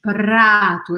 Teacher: Eu faço a minha língua bater no céu da boca e voltar.